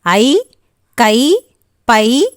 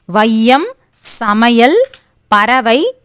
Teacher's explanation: சொற்களின் முதல், இடை, இறுதி ஆகிய இடங்களில் வரும்போது தனக்குரிய 2 மாத்திரை அளவிலிருந்து குறைந்து ஒலிக்கும். இவ்வாறு குறைந்து ஒலிக்கும் ஐகாரம் ஐகார குறுக்கம் எனப்படும்.